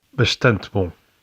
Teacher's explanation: The sound represented by the letter S is also different in some contexts. In European Portuguese, it's sh before a voiceless consonant, even if it's in the following word, and before a pause. In other words, at the end of a word if there's nothing right after it.